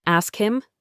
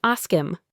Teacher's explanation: The H in him is often silent in unstressed situations. So we don't say ask him, we say ask him.